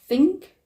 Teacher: To articulate this sound, we have to have the contact of the tongue against both upper and lower teeth. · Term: dental